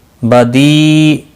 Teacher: یا مدہ ہے، ایک الف کے برابر کھینچ کر پڑھیں گے۔